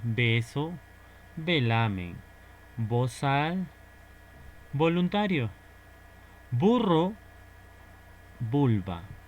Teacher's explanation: el fonema bilabial con la B y con la V. La representación es totalmente igual